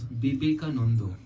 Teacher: Bengali similarly has shwa in it, but interestingly, it's not a, it's o.